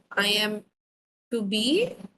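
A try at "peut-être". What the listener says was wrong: No no no no no no, এটা একসাথে উচ্চারণ হবে পুতেত। পুতেত বলেন। এই টিটা গিয়ে এর সাথে লিয়াজো করতে হবে।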